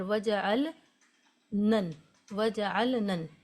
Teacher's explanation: इस लाम को नहीं पढ़ते हैं पिछले वाले नून को इस नून से मिलाकर पढ़ते हैं जिसकी वजह से गुन्ना होता है